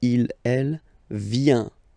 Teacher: Final T not pronounced.